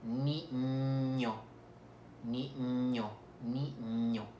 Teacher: Hay que hacer vibrar las cuerdas vocales para poder producir el sonido de la ñ.